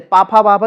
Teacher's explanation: पा वर्ग जो है वो ओष्ठ से, पाफा बाभा जब बोलते हैं तो बिना ओठ के आप पाफा बाभा नहीं बोल सकते हैं